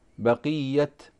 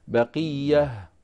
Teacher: فابن كثير رحمه الله تعالى وقف على هذه التاء بالهاء فيقف بقية هكذا.